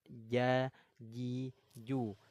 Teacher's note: Dari wastul lisan, wal wastu fajimush shinu ya. Huruf jim keluarnya dari tengah lidah. Ja. Nah, tengah lidahnya naik ke langit-langit.